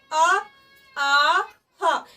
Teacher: ये जो हमारी आ और हा की आवाज आ रही है ये हमारे कंठ से ही आ रही है